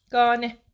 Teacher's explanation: Tələffüz zamanı A səsi uzandı.